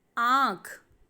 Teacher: आँख में आ बोलते समय आवाज़ नाक से और मुंह से दोनों से आ रही है, इसीलिए आ के ऊपर हम चंद्र बिंदु लगाएंगे और शब्द बनेगा आँख। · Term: अनुनासिक